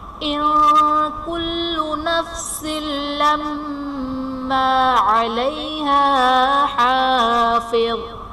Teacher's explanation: ان کل میں نون ساکن کے بعد حروف اخفا میں سے کاف ہے تو یہاں پر اخفا کا قاعدہ اپلائی کریں گے، یعنی نون ساکن میں ہم غنہ کر کے پڑھیں گے